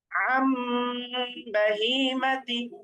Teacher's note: আন না পড়ে, আ দন্তন না পড়ে আ ম পড়তে হবে এবং গুণনা করতে হবে। আম বাহিমাতি, এরকম। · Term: ইকলাব